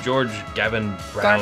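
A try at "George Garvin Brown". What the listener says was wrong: Garvin. The R was real silent.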